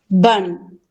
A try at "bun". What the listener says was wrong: Te fuiste a la castellana otra vez, ahora me está diciendo van, otra vez it's bomb, bomb, oh, bomb.